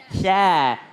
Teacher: Sya nggak perlu monyong bibirnya, jangan sya. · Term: huruf sya